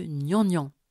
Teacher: au niveau du palais dur l'occlusion nasalisée produit le gne de gnannan